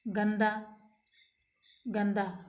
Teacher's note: गंदा, गंदा, यहाँ पर अनुस्वार के चिन्ह के प्रयोग के बाद त वर्ग का वर्ण द है, अतः यहाँ अनुस्वार का चिन्ह न यानी त वर्ग के पंचम वर्ण का उच्चारण करता है